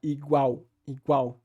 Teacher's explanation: no português brasileiro há uma ditongação e esse L é realizado como u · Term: l final